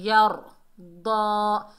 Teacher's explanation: या को रा से मिलाएंगे, रा को मोटा पढ़ेंगे, यर्दा, दाद के ऊपर खड़ा ज़बर है, एक अलिफ की मिकदार खींच कर पढ़ेंगे और दाद हुरूफ इस्ताला में से है, मोटा अदा होगा, यर्दा।